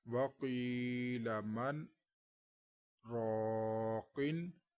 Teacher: اب میں نے ملا کر پڑھنا تو وقیل من راقن۔ من کہہ کے میں نے اپنی آواز روک لی لیکن سانس نہیں لیا، تو اسی سانس میں آگے میں نے پڑھا اس حصے کو، تو ایسا ہی اس میں کریں گے۔ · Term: سکتہ